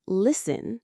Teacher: The T is totally silent even though it stares right at you on the page.